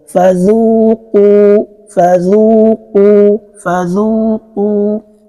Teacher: They have same sounds because letter Zal is having Dhamma, right? Letter Qaf too is also having Dhamma. That is why my lips keep extended.